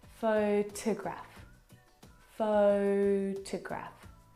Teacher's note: the second syllable is unstressed and it is reduced down to the schwa sound photograph photograph it's very short it's very lazy it's not very